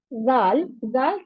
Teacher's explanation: Dal sound comes when the tip of the tongue touches the roots of the upper two front teeth. Zal, zal sound comes when the tip of the tongue touches the edges of the upper two front teeth.